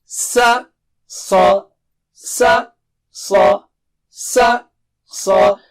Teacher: یاد رکھیے سا کہتے ہوئے سو ایسا ہونٹ بالکل گول نہیں ہونا چاہیے